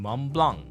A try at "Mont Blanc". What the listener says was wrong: Mont Blanc. Okay, you don't pronounce the T and the C.